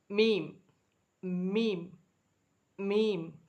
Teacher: 2 உதடு இணைச்சி சொல்லும் பொழுது மூக்குலேயும் சத்தம் வரும். · சத்தங்கிறது மூக்குலேன்னு வரும். லைட்டாக என்ன செய்யும், மூக்குலேன்னு சத்தம் வரும். · 2 உதட்டுலேருந்து இந்த எழுத்து வெளியாகும். 2 உதடு இருக்குல்லங்க, 2 உதடு.